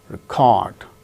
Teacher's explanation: second syllable gains stress when it is used as verb